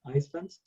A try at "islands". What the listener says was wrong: Be careful with the pronunciation of islands because the S is not pronounced. Actually, what you pronounce is this, island. Island. Different from Iceland, that is a country. You see, when you say Iceland, well, when you say island, you refer to this. But when you say Iceland, you refer to the country.